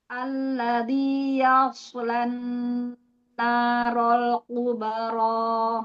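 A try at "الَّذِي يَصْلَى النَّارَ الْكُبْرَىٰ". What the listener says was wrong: Jangan ditamtid ianya. Yasla. Yasla. Lagi lebih cepat ianya. Yasla. Iya, masih sedikit. Yasla, yasla, Ah, jangan. Alladhi yasla, yasla, yasla.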